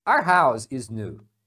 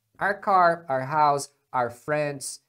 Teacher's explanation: as pessoas diminuem essa pronúncia para are our house is new ao invés de falar our eles não fazem essa vogal completa